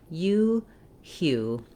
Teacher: in this word it says the oo sound plus the glide ya. So I've rewritten that here for you with the letter Y and two O's because that's typical for the U combination.